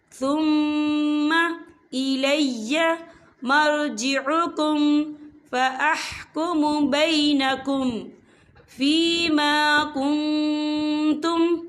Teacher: یہاں میم مشدد ہے تو یہاں پر غنہ ہوگا